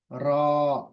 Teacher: र अलिफ भी मोटा आएगा र और आवाज मुंह के अंदर ही रहेगी इसकी मुंह के अंदर जाएगी र बाहर नहीं आएगी र तो